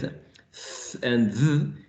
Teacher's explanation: The same thing with th and th, in which the tip of the tongue inserted in between the teeth is creating this very, very small or narrow gap